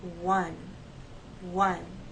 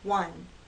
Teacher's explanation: there's movement of the lips one one I pull it into a tight o and then I release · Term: W